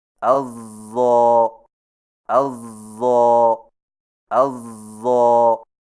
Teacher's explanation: اور یاد رکھیں کہ ضاد کی ادائیگی کے وقت اگر زبان کی نوک سامنے والے نیچے کے دو دانتوں سے ٹکرا گئی تو ضاد کا تلفظ موٹا زا بن جائے گا